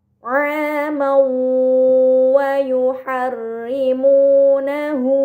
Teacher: Ini dinamakan idgham bi gunnah, maka fathahtain dibaca secara melebur dengan gunnah yang dipanjangkan.